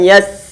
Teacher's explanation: perlu untuk kita pastikan bahwa ada angin yang keluar dan suara kita buat dengan mengalir dan gak boleh untuk di qolqolahkan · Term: sifat hams